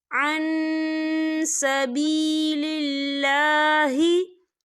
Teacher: नून साकिन की आवाज़ को नाक में छुपाएंगे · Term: इक्फ़ा